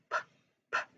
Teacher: p sound made by briefly pressing your lips